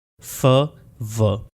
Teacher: फ एंड व ये लेबियोडेंटल हैं, यानी लिप्स और टीथ के साथ प्रोड्यूस होते हैं। फ वॉइसलेस है, व वॉइस्ड है।